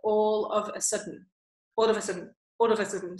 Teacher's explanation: So those first three words in that expression, they all get kind of joined together and shrunk down.